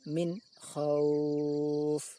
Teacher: Makhraj nun sukun dan makhraj kha jelas terpisah. Min khauf, seolah-olah berhenti sejenak. · bunyi nun sukun harus dibaca jelas, tidak boleh dengung dan juga tidak boleh samar antara jelas dan dengung. Maka harus dibaca min, tidak boleh min ataupun min, harus min. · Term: izhar halki